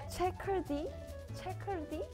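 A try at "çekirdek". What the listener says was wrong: Not bad.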